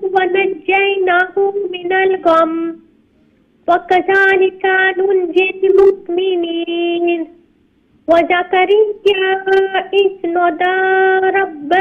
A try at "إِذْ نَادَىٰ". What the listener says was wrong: Look, there's alif madda after the noon. So you need to stretch it one alif long.